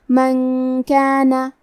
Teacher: کلمت من کے آخری میں نون ساکن ہے، پھر حرف الکاف ہے کلمت کانا۔ کاف حروف الاخفاء میں سے ہے، تو ہم یہ حکم کو غنہ کے ساتھ ادا کریں گے